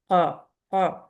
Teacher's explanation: جب زبان کی روف سے لگ رہی ہے تو پریشر کے ساتھ ٹچ کرتی ہے، مخرج بلاک ہوتا ہے اس لیے اس میں خوب سختی آتی ہے۔